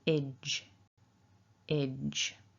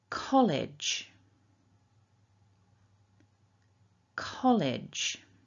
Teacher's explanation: our second syllable then, we've got that short I, and then j. So idge, idge.